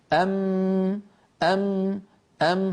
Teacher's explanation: هل لاحظتم هذا الصوت الأنفي الذي يمر من خلال الأنف؟ إذن مجموع هذين العملين، تصادم الشفتين ومرور الغنة من الخيشوم، مجموع ذلك يشكل لنا حرف الميم. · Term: الجزء الخيشومي